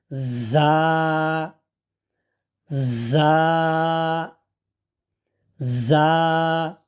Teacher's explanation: জিহ্বার মাথা উপরের দাঁতের মাড়ির সাথে লাগিয়ে